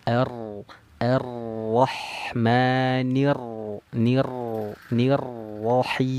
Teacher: wajib digetarkan ujung lidahnya. Tapi tidak boleh takalluf, jangan berlebihan.